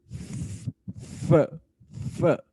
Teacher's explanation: अपर teeth और lower lips जब आपस में टकराते हैं तो ये एक साउंड प्रोड्यूस होती है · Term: फ्रीकेटिव